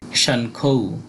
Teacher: উ আর খ এই দুইটা যুক্তবর্ণ রয়েছে উ এর উচ্চারণটা হবে অর্ধেক ন এর মতো আর খ এর উচ্চারণটা পুরো হবে